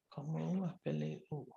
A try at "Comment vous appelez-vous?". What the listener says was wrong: The VOUS is pronounced as VOU itself. That's it. Vous. We do not pronounce the S letters.